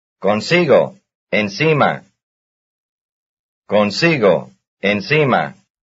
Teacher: their stress is on the same syllable, that is, the second to last syllable